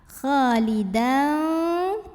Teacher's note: Berikutnya ada hukum ikhfa awsat sebab ada tanwin fathah yang bertemu dengan huruf fa. Maka tanwin fathahnya kita bunyikan samar-samar.